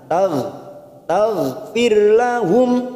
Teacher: hati-hati memantul bukan qolqala kita tahan tag tagfirlahum mim sukun bertemu wau namanya bacaan idhar syafawi kita · Huruf gha sukun ghain, hati-hati memantul, bukan kolkola, kita tahan.